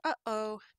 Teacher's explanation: if you say uh oh you might even be able to feel that little bit of tightening in your throat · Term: glottal stop